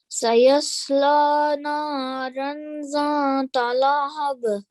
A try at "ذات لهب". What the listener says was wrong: Yeah, it's a nasal sound that's coming here, exactly. So try to avoid that nasal sound. It's just zata.